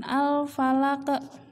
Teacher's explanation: Nah, ini ada huruf qaf yang harus dipantulkan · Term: qalqalah